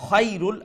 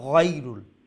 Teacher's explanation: খা লেটার খা আর লেটার গাইন কিন্তু সমান জায়গা থেকে উচ্চারণ করে, অর্থাৎ গলার উপরের অংশ থেকে, কিন্তু সিফাত দিয়া এগুলা পার্থক্য করা লাগবে।